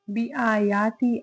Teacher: الف مدہ ہے، 2 حرکت لمبا کریں گے۔